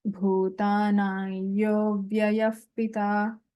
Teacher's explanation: Here Anuswara takes a nasalized ya. And then the Visarga changes to Upadhaniya sound.